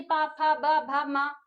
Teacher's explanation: जो हमारे ओंठ हैं वो हमारे छू रहे हैं एक-दूसरे को। ओष्ठ पता चल रहा है।